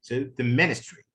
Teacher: The main stress is here on the first syllable of ministry.